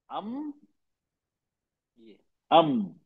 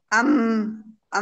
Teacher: मीम की आवाज आगे खशूम, मतलब नाक में, नेशनल पैसेज में चली जाती है। मीम में होठों का सूखा हिस्सा, ड्राई पार्ट, आपस में लाइटली मिलता है।